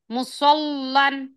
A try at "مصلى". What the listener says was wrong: لام باریک پڑھیے، موٹا پڑھنے کی ضرورت نہیں ہے، وہ لام جلالہ کے لیے قاعدہ خالی. سواد موٹا، لام باریک.